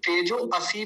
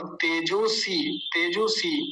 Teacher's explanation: अ नहीं होता इसका उच्चारण अ का लोप हो गया